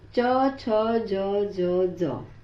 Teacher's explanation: यहाँ रुकावट गले के थोड़ा आगे तालू पर आ जाती है। जीभ का बीच का हिस्सा तालू को छूता है। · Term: च वर्ग